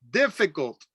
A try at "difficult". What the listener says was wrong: Make sure you pronounce that T. Difficult.